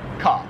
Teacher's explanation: Where here in Australia, it's just like car. Like they hardly say the R.